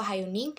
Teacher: H bunyi frikatif glotis tak bersuara, contoh hayuning.